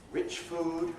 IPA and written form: ˈrɪʧ ˈfuːd (rich food)